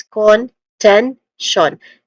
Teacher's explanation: Contention. Ten being the stressed syllable here. So starting with con, which has a schwa sound, a weak and stressed o vowel sound.